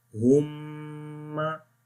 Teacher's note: The gunna sound goes into nose.